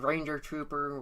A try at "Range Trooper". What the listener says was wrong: Is it range? I think it's just range. Not ranger. Range.